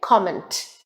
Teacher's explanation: so it is neither comment nor comment it is comment and the stress is on the first syllable com and the pronunciation is again comment